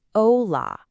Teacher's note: Hear that pure o and a?